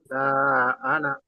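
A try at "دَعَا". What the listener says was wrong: দা। দা টান হবে না, বুঝতে পেরেছেন? দা টান হবে না, কেন? দার উপরে তো হারাকাত আছে। হারাকাত কি টান হয়?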